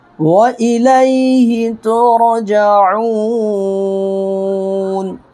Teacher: عین واو پیش او کو ہم 4 سیکنڈ تک لمبا کر سکتے ہیں، کھینچ سکتے ہیں